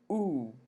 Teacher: if we do an ooh your lips are rounded and your lips are also tense so ooh would be back High T rounded you can take